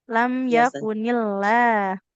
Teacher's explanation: lam pada lafaz allahnya tipis kalau huruf sebelumnya kasrah